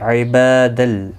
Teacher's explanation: عبادل، با الف مدہ ہے، تنوین کے بعد یرملون کا لام آئے، ادغام ہوگا گنہ کے بغیر